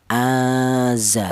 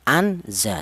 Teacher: Nun mati ini cara bacanya disamarkan aza seperti itu. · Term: ikhfa